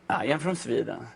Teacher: The first thing you will notice is this singy-songy melody we have when we speak English.